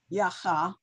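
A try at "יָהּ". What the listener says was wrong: No, there's no cha. It's just ya.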